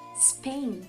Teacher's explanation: E a Espanha, ela é escrita em inglês iniciando com S, então a gente não vai dizer es, como a gente tem costume de botar a vogalzinha no início